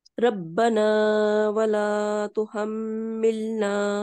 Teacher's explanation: با کا مشدد جو ہے اس کو آپ تھوڑا سا سختی سے پڑھیں گی اور میم پہ غنہ کریں گی